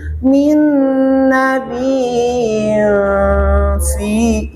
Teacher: Berarti hukum ifanya tidak sempurna, tidak tersampaikan. Bagaimana untuk menyempurnakan tanwin itu harus samar, biar tidak terasa hilang, maka harus disertai dengung.